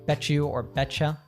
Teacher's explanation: when we have a t plus a y in American English we change it it morphs into a CH sound same actually happens if you have a d plus a y